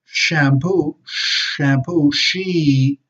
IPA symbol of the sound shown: ʃ